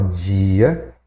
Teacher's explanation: A gente usa o alofone J diante de I